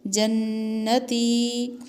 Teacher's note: یہاں نون مشدد ہے، اس پر غنہ ہوگا اور دال پر قلقلہ ہوگا.